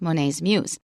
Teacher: This is a possessive. So in that case, we stress both of them. We treat Monet's just like an adjective. Adjective and noun are both stressed.